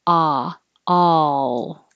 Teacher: if you are too fast with the L it won't be heard and it'll sound like oh